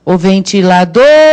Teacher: É o dor que é a sílaba tônica.